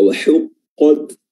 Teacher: Huruf ha ya, wa huqqat makhrajnya adalah wasatul halq, tenggorokan bagian tengah ya. Caranya adalah dengan mengapit kedua sisi atau kedua dinding tenggorokan tengah sehingga terbentuk celah yang sangat sempit dan menghasilkan huruf ha yang kedengaran sangat nyaring dan tajam.